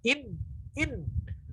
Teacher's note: ketika nun bertasydid itu sempurna masuk ke hidung semua